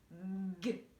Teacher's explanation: Il ne se passe rien. Par contre, G, voilà, ça gonfle comme une grenouille puisque j'utilise ma voix.